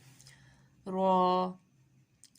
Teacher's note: را کا مخرج ہے زبان کی پشت والا کنارہ اوپر کے اور اوپر کے دانتوں کے مسوڑے۔